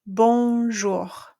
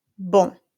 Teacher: we're not going to pronounce the N or the M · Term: nasal sound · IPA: [ ɔ̃ ]